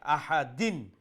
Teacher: তানবিনের পরে আইন চলে আসছে না হরফে হালকি তো এটাকে স্পষ্ট করে আহাদিন অর্থাৎ দিন নুন সাউনকে সেখানে আমরা স্পষ্ট করব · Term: ইজহার